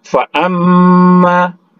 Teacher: Selanjutnya fa'amma, mim bertasydid, ya, digunahkan, ya. Fa'amma wadah musyaddah.